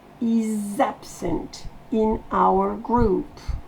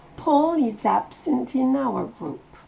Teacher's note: N'oubliez pas la liaison entre le is et absent.